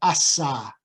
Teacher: S as we said before is a fricative and produces turbulence or hissiness